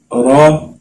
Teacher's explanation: را کو ہم نے موٹا پڑھنا ہے پورا منہ کھول کے، تو زبان اوپر تالو کے ساتھ لگا کے تو پھر اس کی ادائیگی ہم کریں گے، یعنی را کو ہم موٹا پڑھیں گے.